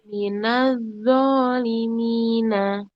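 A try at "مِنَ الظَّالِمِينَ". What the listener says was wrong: Masih terhenti. Ayo lanjut. Minal dho, langsung minal dho. Ya, arrohnya harus ada arrohnya minal ada arrohnya yang mengalir, suaranya masih ada ketika dia sebelum dia menyebut huruf kan dho yang kedua. Minal, nah seperti itu Bun.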